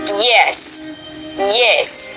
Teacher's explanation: Tongue raises to hard palate, but not too close, palatal.